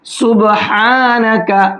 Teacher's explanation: बड़ा हा है, मिडिल हलक से निकाल करके पढ़ेंगे।